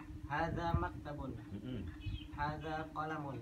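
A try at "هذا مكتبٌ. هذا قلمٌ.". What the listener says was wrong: Nah, tekanannya kurang. Hadza yang keras biar cepat bisa.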